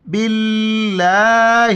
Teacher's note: یہاں پہ لفظ اللہ کو ہم باریک پڑھیں گے کیونکہ زیر آ رہا ہے · لفظ اللہ کے لام پر کڑا زبر ہے، ایک الف کی مقدار اوپر کھینچنا ہے ، الف کو اور لام کو ہم بیچ میں نہیں پڑھیں